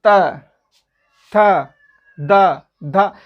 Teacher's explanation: आप देखिए जीभ दांत को स्पर्श कर रही है